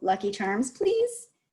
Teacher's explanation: so you're showing him that he needs the rising intonation he needs to ask the question